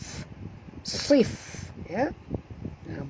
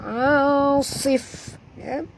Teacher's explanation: pastikan bunyikan hamas pada huruf fa ya